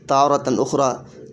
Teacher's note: را پر زبر ہے تو را کو موٹی آواز پڑھیں